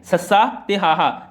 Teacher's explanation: ਊਸ਼ਮ ਧੁਨੀਆਂ ਕਿਹੜੀਆਂ ਨੇ ਸੱਸਾ ਤੇ ਹਾਹਾ ਜਿਹਦੇ ਵਿੱਚੋਂ ਮੂੰਹ ਚੋਂ ਗਰਮ ਹਵਾ ਬਾਹਰ ਨਿਕਲਦੀ ਉਹਨਾਂ ਨੂੰ ਊਸ਼ਮ ਧੁਨੀਆਂ ਕਿਹਾ ਜਾਂਦਾ ਹੈ